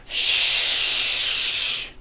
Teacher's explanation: sh and voiced sh sounds first to make the sh sound you bring your lips forward keep them open and leave your teeth slightly apart blow air through your teeth and produce the sound sh